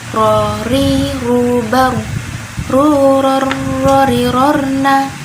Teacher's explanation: ro ujung lidah mengarah ke langit-langit lebih dalam daripada nun dan dia sifatnya jahar atau tidak mengalir nafasnya. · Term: huruf ro